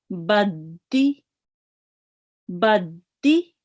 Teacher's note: Now notice that I'm reading it hardened. I'm spending a little bit of time on the dal, just a fraction of it.